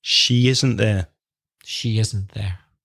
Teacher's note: There's a Y sound, a Y sound between the she and the isn't.